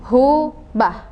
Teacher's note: huruf H itu adalah tenggorokan bagian pangkal atau bagian bawah